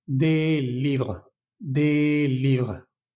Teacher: agregando simplemente una s, pero esa s no se pronuncia, ¿vale? Nunca, nunca se va a pronunciar.